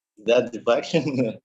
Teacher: you notice your rising intonation